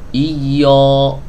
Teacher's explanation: yang kedua tebal Tuh kan karena membuka Mulutnya ini terlalu lebar